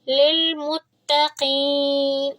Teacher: تا کو نرمی سے پڑھیں گے لیکن تھوڑا سا اس کو مضبوطی سے پڑھیں گے کیونکہ اس کے اوپر ہے تشدید۔ جس بھی حرف پر تشدید ہوتی ہے اس کو ہم تھوڑا مضبوطی کے ساتھ پڑھتے ہیں، تھوڑا اسٹرانگ کر کے پڑھتے ہیں کیونکہ ہم نے اس حرف کو 2 بار پڑھنا ہے۔